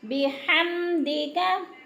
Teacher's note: बिहम पे को लंबा नहीं करना, जल्दी जल्दी अदा करना है, गुन्ना नहीं करना, मजहूल हो जाएगा।